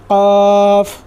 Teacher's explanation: जुबान की जड़ और तालू के सख्त हिस्से पर लगाने से अदा होता है। · जुबान की जड़ और तालू के नरम वाले हिस्से पर लगाने से अदा होता है।